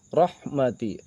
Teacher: ro masuk ke dalam ro tafhim karena berharakat fathah dan dibacanya sudah pasti harus tebal